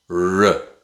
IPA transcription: ɹ